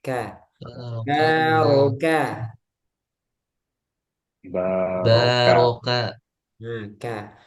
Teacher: nah ini k-nya tipis ya k jangan k ko tapi kaoka